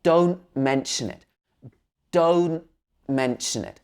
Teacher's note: So here it's like a glottal sound. Your glottis would close and open up again. · So in this phrase, don't, we wouldn't say the last t normally.